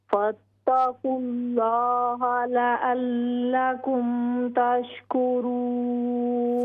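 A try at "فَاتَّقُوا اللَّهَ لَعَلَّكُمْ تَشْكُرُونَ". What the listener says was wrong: फत्तकुल्लाह लअल्लकुम तशकुरून। आइन को क्लियर कीजिए।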